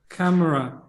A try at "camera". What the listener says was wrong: Yeah, you don't need to pronounce the e. You don't need to say camera. cut out the e. No, cut it out. Remove it. Camera. Cut out the e like it was a malignant mole. Just cut it out of your skin. Cut it out.